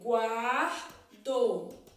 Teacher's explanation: No guardo, o ditongo é crescente porque primeiro eu tenho uma semivogal e depois eu tenho a vogal. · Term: ditongo crescente